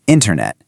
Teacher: It's not a flat internet. You really have to hit that first syllable hard. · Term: word stress